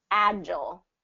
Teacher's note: agile i'd say stick with that first syllable stress